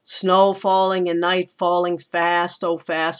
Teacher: So the words that get emphasized in that line are snow, night, fast, and once again, fast.